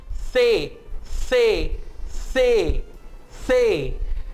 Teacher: आपकी जो जबान है वो मुंह से बाहर आएगी, थोड़ा सा आपके ऊपर वाले जो दांत हैं उनको टच करेगी और जबान और दांत के दरमियान से आप हवा निकालेंगे. मुझे गौर से देखिए और कॉपी कीजिए. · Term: TH की साउंड